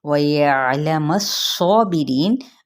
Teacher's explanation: وَيَعْلَمَ الصَّابِرِينَ، واو ہونٹوں کی نا تمام گلائی کے ساتھ، یعلم، اب یہ صاد پہ کیا ہے؟ صفیریہ لیٹر، یعنی مثل سیٹی کے اس کو ادا کرنا ہے، اور حروف مستعلیہ میں سے بھی ہے تو اس کے اوپر کھڑا زبر بھی ہے، ٹھیک ہے۔